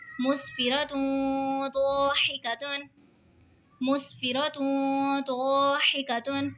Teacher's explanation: دو پیش کی تنوین کے بعد حروف اقفا کا ضاد آ رہا ہے تو اقفا ہوگا یعنی گنہ کر کے پڑھیں گے